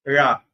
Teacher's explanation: Degree அதுக்கு மேல எல்லாம் போகலாம். மேல் அன்னத்தை தடவணும். ழா அப்படின்னு வரும் தொட்டும் தொடாமலும் தடவி சொன்னா ழ